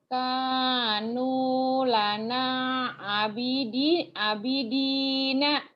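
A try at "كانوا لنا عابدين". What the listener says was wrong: A-nya ada yang berdiri tuh panjang. A-nya panjang. Kanu lana abidina. Yang panjangnya A sama Nu sama Lu.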